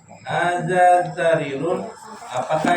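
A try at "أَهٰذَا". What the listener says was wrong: Ada A-nya. Ahada ada A-nya.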